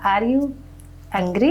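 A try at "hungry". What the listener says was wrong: अरे एंग्री नहीं होता, हंग्री होता है।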